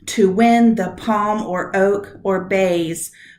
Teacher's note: I want to emphasize win, palm, oak, bays, not to the, and or.